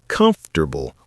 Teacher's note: Word one, comfortable, not come for tubble with four syllables. It's comfortable with three syllables. Drop that or sound.